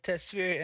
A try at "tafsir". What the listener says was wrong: Tafsir, my friend, it's called it's called tafsir, not tasfir. No, you said tafsir, tasfir.